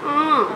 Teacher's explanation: वायु मुख के साथ नाक से भी निकलती है। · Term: अनुनासिक